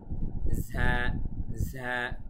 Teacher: একটু প্রেসার দিয়ে বলবো, ভেতর থেকে একটি বাতাস বের হবে। বাংলা মহাপ্রাণধ্বনির মতো উচ্চারণ।